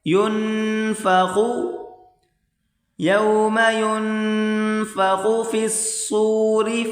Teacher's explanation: یہاں پر غنہ کریں خا کو موٹا کر کے پڑھیں